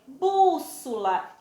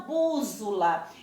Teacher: eu não pronuncio o som do Z no meio de duas vogais